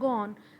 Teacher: اب گو آن جب آپ پڑھتے ہیں، گو اینڈ آن، اوبیسلی ہم اس کو جب تیزی سے بول رہے ہیں گو آن، تو یہاں پہ ساؤنڈ آف ڈبلیو ہمیں محسوس ہوتی ہے اور یہ جی اور این کو لنک کرتی ہوئی محسوس ہوتی ہے. یعنی کہ یہ پریسیڈنگ کو بھی اور آنے والے ورڈ کے بھی ساؤنڈ کو ملا رہی ہے.